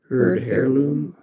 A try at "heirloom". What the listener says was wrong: Is it heirloom? You don't really pronounce the H, right? Yeah, that's heirloom. You don't pronounce the H.